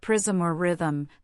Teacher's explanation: the M can form its own syllable without the need for a vowel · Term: salabic consonants